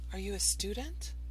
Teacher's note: yes no questions such as are you a student you remember these have a rising intonation